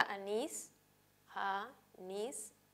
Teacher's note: si separamos en sílabas y reconocemos la sílaba tónica va a ser nis